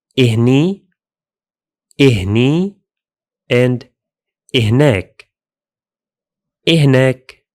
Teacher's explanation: In some regions, speakers may add an I sound at the beginning, like this: إهني, إهني, and إهناك, إهناك.